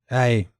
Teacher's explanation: ایک ہی سانس میں آپ نے پہلا واول ادا کرتے کرتے ہی دوسرا شروع کر دینا ہے